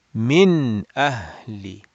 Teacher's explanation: the Noon Sakin or the Tanween is pronounced clearly without gunna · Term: Izhar